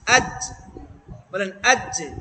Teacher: জিব্বার মধ্যখানটা উপরে তালুর সাথে লাগে